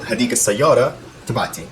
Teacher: And you know, once you add the suffix, that T actually, the tamarbuta actually becomes activated, and it does sound like a T